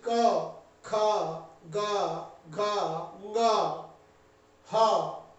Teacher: ये कंठ्य वर्ण है जिनका उच्चारण सीधे कंठ से होता है